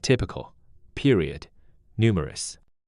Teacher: 3-syllable words with stress on the first syllable